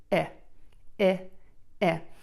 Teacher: for the short I sound, my lips are relaxed and my mouth is relatively closed. With my mouth relatively closed, of course it is open slightly to allow the air to come out, the tip of my tongue is going to be close to the back of my top front teeth. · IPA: ɪ